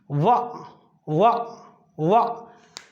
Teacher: और वा का जो उच्चारण स्थान है, जब भी आप वा को उच्चारित करते हैं, वा वा वा, तो आप देखते हैं कि ऊपर वाले जो दांत हैं नीचे वाले होठ से ये मिल जाते हैं। वा वा, ऊपर वाले दांत नीचे वाले होठ से मिल जाते हैं। इसका मतलब है कि इसका जो उच्चारण स्थान होगा वो दंत और ओष्ठ दोनों होगा। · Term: दंत्योष्ठ